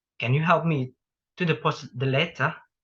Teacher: a falling rising intonation pattern is used a lot for polite requests